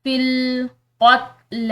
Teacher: یہ تا جو ہے تا ساکن، اس کو بالکل سکون کے ساتھ ادا کرنا ہے